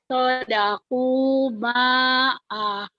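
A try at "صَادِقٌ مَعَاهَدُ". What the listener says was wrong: A-nya panjang juga. Ayo lagi. Ho-nya juga panjang. Ini banyak yang panjang. Ayo ibu harus hati-hati. Penyakit ibu di panjang pendek ini. Selalu ibu pengucapan pertama tuh suka aneh. Tadi kedengarannya kayak daku. Sodaku ma'ahadu.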